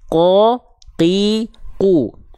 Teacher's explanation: huruf qaf itu dilafalkan dari pangkal lidah. Pangkal lidah itu bagian lidah terdalam kita.